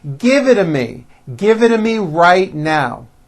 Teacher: If you remember in American pronunciation, when T's fall between 2 vowels, they become voiced and are pronounced as D's